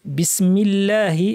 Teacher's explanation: বিসমি বলার সময় সিনটা পাতলা রাখতে হবে এবং সার পাওয়া যাবে যেটাকে সফির বলা হয় · আল্লাহর লাম পাতলা কেননা মিমে জের আছে